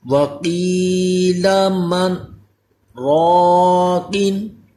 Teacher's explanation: قاف کو پر بھی کرنا ہے، یہ حروف مستعلیہ ہے